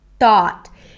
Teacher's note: I pressed my tongue against the teeth really strongly, and I did not allow the air to pass.